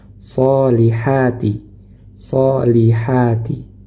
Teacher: dia memiliki sifat isti'la dan itbak jadi pangkal lidahnya ini sampai nempel pada langit-langit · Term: shad